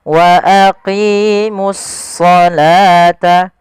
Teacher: ada alif lam kita namakan dengan alif lam syamsiyah yaitu suaranya kita langsung ke huruf shadnya